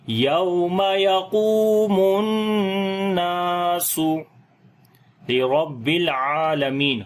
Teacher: کے ساتھ ملائیں گے تو لام کے اوپر صفت توسط ہوگی، عین کو لمبا کریں گے، کھڑی زبر ہے، میم کو لمبا کریں گے